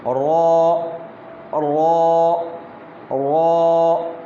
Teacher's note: را حرف جو ہے یہ پر ادا کیا جائے گا، اور اس میں صرف ایک الف کی مقدار مد کی جائے گی